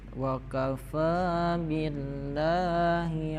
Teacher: jadi setiap ada lafaz Allah itu dibaca panjangnya dua harakatnya